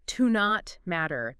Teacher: The T in not kind of blends into the M.